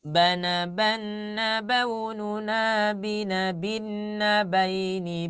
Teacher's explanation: Nah tapi harus sama ya. Jadi yang ban, bin, bun harus sama. 4 harokat semuanya. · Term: pola guna